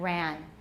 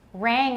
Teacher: They often substitute an alveolar nasal where there should be a velar nasal. For example, rang will often be pronounced ran.